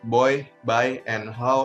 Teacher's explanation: the vowel sounds in the word boy by and how involve a change in the shape of the mouth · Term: diphthong